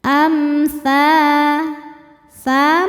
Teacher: Cara bacanya mim sukun dibaca izhar atau jelas. Amsa tsa mad thobi zohiri sebab ada alif didahului harakat fathah. Cara bacanya panjang dua harakat.